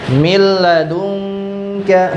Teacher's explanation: Kemudian tidak perlu didengungkan. Jadi hanya dimasukkan tetapi tidak didengungkan. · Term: idgham bila gunnah